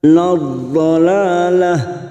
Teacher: Cara membunyikannya dengan pinggir lidah nempel pada gigi geraham atas, boleh kanan boleh kiri. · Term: huruf dha